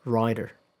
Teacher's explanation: There is a difference in vowel length. Um the vowel in rider is a little longer.